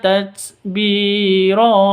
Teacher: Ro ini panjang dua ketuk, ini mat iwad karena mat asli berada di waqaf.